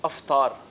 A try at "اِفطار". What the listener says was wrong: افطار جناب افطار نہیں بلکہ افطار ہے، اسی سے افطاری ہے. تو افطار بھی درست نہیں اور افطاری بھی درست نہیں، بلکہ افطار جو ہے وہ یہ درست لفظ ہے. الف کے نیچے ہم نے زیر پڑھنی ہے، زبر نہیں پڑھنی.